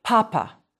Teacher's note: In English, you let a little air escape when you say papa. If you hold a thin strip of paper in front of your lips when you say papa in English, the paper will move with your breath.